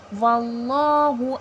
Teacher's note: اللہ لفظ سے پہلے زبر آ رہا ہے، اللہ لفظ تفخیم کر کے موٹا کر کے پڑھا جائے گا. اللہ لفظ سے پہلے جب بھی زبر یا پیش آتا ہے اللہ لفظ موٹا کر کے پڑھا جاتا ہے.